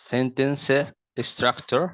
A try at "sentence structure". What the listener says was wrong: There is no, the S does not end. I was hearing S's being pronounced longer than we say them. Do you remember yesterday that we talked about, I mentioned yesterday that short syllables in English have different pronunciations.